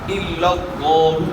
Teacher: لفظ اللہ کلام سے پہلے والے حرف کے اوپر زبر ہے تو لفظ اللہ کلام پورا ادا ہوگا، یعنی موٹا ادا ہوگا،